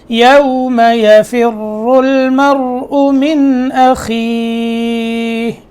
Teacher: را جو ہے وہ موٹا ہے